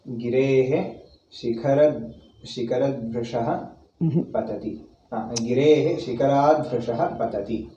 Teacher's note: Shikharat, ta changes to da. That's because soft consonant. Hard changes to soft.